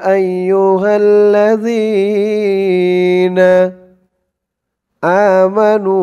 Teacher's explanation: জালের উচ্চারণটা একদম নরম পাতলা করতে হবে জিহ্বার মাথা উপরের দাঁতের মাথার সাথে লাগবে